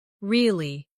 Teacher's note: With a falling tone to show you don't believe someone.